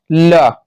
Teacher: ला क्या है, दंत ध्वनि है